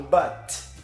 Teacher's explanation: ela termina com um T e o som dele é um T seco, né? Esse T normal que a gente está habituado.